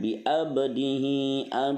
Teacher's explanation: ba-nya sukun asli berarti qalqalah sugro